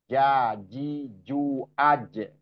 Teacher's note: yang pertama tadi itu Jim J eah Jim itu apa makhrjnya di tengah-tengah lidah lidah paling tengah bertemu dengan langit-langit atas